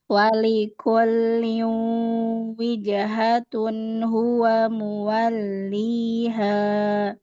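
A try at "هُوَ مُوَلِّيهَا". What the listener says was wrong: tebal. Ha datar lagi. Ha,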